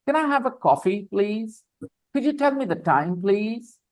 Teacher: when you say the coffee your voice goes up when you say the word time your voice goes up